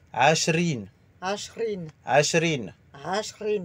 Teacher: À la place de ra, c'est rin. Ashrin. Avec le R roulé.